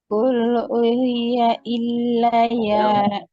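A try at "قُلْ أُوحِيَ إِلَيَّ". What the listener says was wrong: U-nya panjang itu kan. Kemarin sudah belajar.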